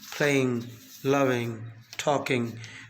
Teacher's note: The last sound of ing, what is called ing, is pronounced with the help of this nasal sound or velar sound ing. It is voiced.